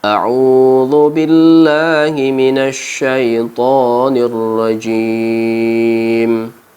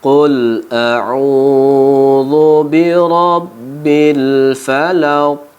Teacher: qul a'u-nya panjang karena ada huruf waw yang mati, sebelumnya ada huruf berbaris depan sesuai dengan tanda mad tabi'i. Kita panjangkan dengan 2 harkat.